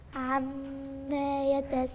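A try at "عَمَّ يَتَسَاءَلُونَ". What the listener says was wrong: وفين الاربع حركات الاربع حركات بتوع المد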